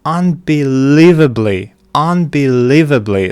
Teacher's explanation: the third syllable is stressed